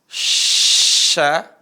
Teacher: Kalau shin tempat keluarnya adalah tengah lisan. Ketemu langit-langit. Tengah lisan ketemu langit-langit. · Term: huruf shin